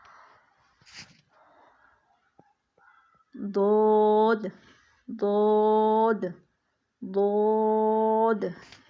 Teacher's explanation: खूब मोटी आवाज में पढ़ना है लेकिन होठों को हरकत नहीं देनी होठों में नीचे वाले होठ को बिल्कुल मूमेंट नहीं देनी ना